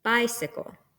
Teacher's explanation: one stressed syllable followed by two unstressed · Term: dactylic